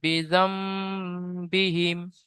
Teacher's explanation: নুন সাকিনের পরে বা এসেছে, তাই নুনকে মিমের দ্বারায় পরিবর্তন করে এক আলিফ পরিমাণ গুণনা করে পড়তে হবে। বায়ের নিচে জের আছে, যেটি হলো হারাকাত, হারাকাতকে তাড়াতাড়ি পড়তে হয়, টান দেওয়া নিষেধ।